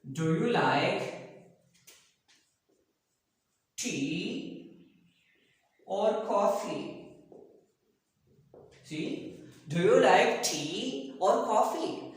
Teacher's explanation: in the first option, rising intonation, and the next option, falling intonation. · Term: rising and falling intonation